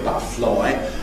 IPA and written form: ˈbʌʔəflɒɪ (butterfly)